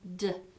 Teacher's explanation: Alveolar stop, that's going to be d. D is the voiced oral alveolar stop.